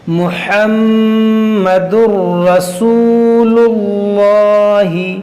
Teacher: اور یہاں پر دیکھیے میم مشدد ہے، اس میں غنہ کریں گے. یہاں واو مدہ ہے، اس کو کھینچیں گے اور اس لام کو موٹا کریں گے